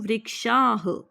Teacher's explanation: जो पीछे यह विसर्ग होते हैं इसको ह का साउंड देते हैं।